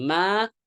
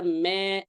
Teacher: Yang kemarin saya share di grup itu adalah terkait vokal fathah. Jangan berlebihan dengan niat menipiskan huruf tipis vokal fathah akhirnya jadi miring imalah